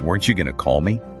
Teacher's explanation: Going to turns into gonna.